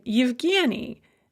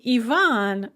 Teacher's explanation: when they are pronounced at the beginning of a word or in a vowel cluster, we pronounce this ya sound at the beginning of these vowel sounds